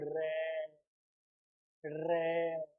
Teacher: हमारी जिह्वा में इसका उच्चारण करने पर कंपन होता है, गुंजन, हाँ गूंज होती है, कंपन होता है। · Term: प्रकंपित